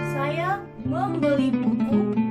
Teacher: tekanan pada kata membeli, maksudnya saya benar-benar membeli, bukan mencuri buku.